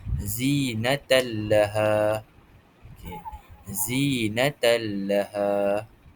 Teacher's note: cara bacaannya ialah menggabungkan suara nun ke dalam huruf selepasnya tanpa didengungkan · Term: idgham bila ghunnah